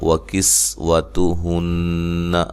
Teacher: ہو مد اصلی ہے، رزقهن قاف کو موٹا، را کو باریک، نون مشدد پہ غنہ ضروری ہے